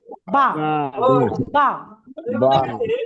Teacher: দুই ঠোঁট ভিজে অংশ মিলিত উচ্চারিত হয় বা